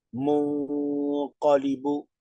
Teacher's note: una leve acentuación en mun y ahí nasaliza dos tiempos.